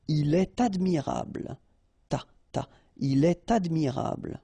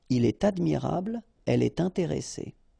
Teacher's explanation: so in all these cases you should make the liaison, and in that case it's with T.